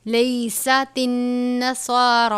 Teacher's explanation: صاد کو بھی پر پڑھنا ہے اور را کو بھی پر پڑھنا ہے۔ علی شیء، تنوین ہے، صاد کا مطلب ہے ملا کر پڑھنا، صاد یا صلہ اس کا مطلب ہے ملا کر پڑھنا۔